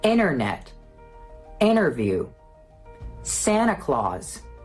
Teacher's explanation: Another phenomenon that involves the T is its complete elimination. And this happens after an N.